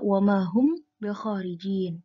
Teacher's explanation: Nah, di sini ada mim sukun bertemu dengan ba, maka membacanya samar di antara dua bibir menjadi gunnah dua harokat menjadi wamahum bikharijin. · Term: ikhfa syafawi